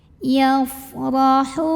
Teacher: Maka cara bacanya adalah ditebalkan, pangkal lidah dinaikkan. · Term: tafkhim